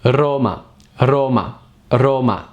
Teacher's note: when the R is at the beginning of a word is stronger so Roma try to trill it a little bit